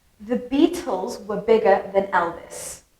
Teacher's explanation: you probably only heard three words beatles bigger and elvis because those were the words that i stressed